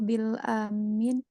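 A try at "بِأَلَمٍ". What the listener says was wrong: bi alam ya. Bukan bil ya, bi a itu.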